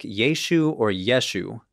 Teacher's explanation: completely dropping off the final guttural letter because of a linguistic quirk of a Galilean accent. As the argument goes, Galilean Aramaic speakers were supposedly very bad at pronouncing guttural letters.